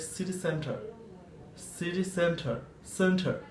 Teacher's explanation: this sound R, it shouldn't be pronounced, because after this R we have consonant sound